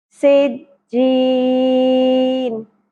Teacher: سین میں سیٹی کا element clear ہونا چاہیے